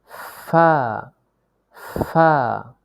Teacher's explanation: নিচের ঠোঁটের পেট সামনের উপরের দুই দাঁতের আগার সঙ্গে লাগিয়ে উচ্চারিত হয় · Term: 14 নং মাখরাজ